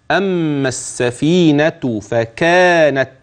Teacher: انتبه الى اللام غير الملفوظ في كلمه السفينه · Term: اللام غير الملفوظة